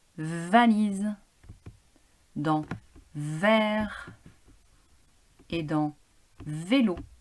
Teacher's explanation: les cordes vocales ne vibre pas alors que le son est un son sonore puisque les cordes vocales vibre